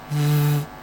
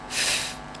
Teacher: For both sounds, I rest my top teeth on my bottom lip. I use my voice for v. I don't use my voice for f. Voiced, v. Voiceless, f.